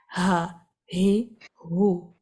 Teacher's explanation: اس میں آپ کو مسل کو بالکل کنٹریکٹ کرنے کی، دبانے کی، گلے کو کوئی ضرورت نہیں ہے. آپ نے سیدھا سیدھا آواز کو اپنے حلق سے ادا کرنا ہے، ووکل کورڈ پر فوکس کرنا ہے.